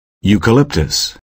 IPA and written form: ˌjuːkəˈlɪptəs (Eucalyptus)